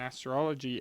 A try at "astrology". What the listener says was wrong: You added a syllable. There's not an E. in there.